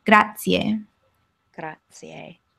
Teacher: And you say the first one a little bit louder. You put the emphasis on that first syllable.